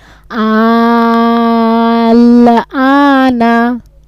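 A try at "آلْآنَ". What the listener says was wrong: হ্যাঁ আলে চার আলিফ টান, নাই টান যাবে না,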